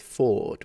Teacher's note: when the word is on its own in isolation he pronounces it Ford with a full extension of the fully pronounced vowel